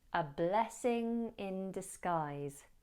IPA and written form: əˈblɛsɪŋ ɪn dɪsˈɡaɪz (A blessing in disguise)